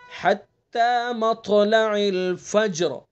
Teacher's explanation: طا کو پر پڑھیں گے، اس کی صفت بلندی، اس کو موٹا کریں گے، حروف مستعلیہ میں سے حتی مطلع الفجر، فجر، ٹھیک ہے؟